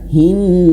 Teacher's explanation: Dan perhatikan anak panahnya dia double 2 harokat, berarti 2 harokat. Ilahin, tahan, hinnas. Nas panjang 4, 5 atau 6 harokat.